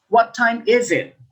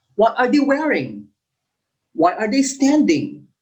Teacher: so your voice goes up and then down at the end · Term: falling intonation